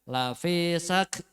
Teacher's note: untuk kafnya hamasnya dikeluarkan